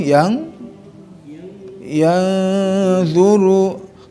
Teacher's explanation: Karena nun bertemu dengan huruf dha. Huruf dha itu huruf ikhfa ya, huruf yang mendengungkan.